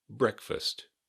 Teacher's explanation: Not breakfast, not breakfast, breakfast. Emphasis on the first syllable. Be sure to keep the T on the end.